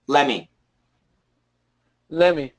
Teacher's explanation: And then many Americans will cancel the T.